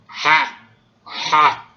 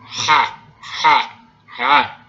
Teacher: Essa variedade sem nada é o som ha, ha. É uma fricativa faringal. É pronunciado lá onde o seu músculo produz o vômito.